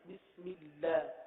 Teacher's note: اللہ کے لام کو باریک پڑھیں گے